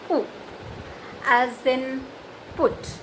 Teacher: that is a back rounded short vowel, as it is articulated from the back side of the tongue, that is back rounded.